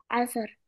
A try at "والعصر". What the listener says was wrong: you are saying As. From where is it's starting? والعصر.